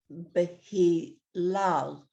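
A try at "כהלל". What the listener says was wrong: Kehilel. That's a kaf. Kehilel.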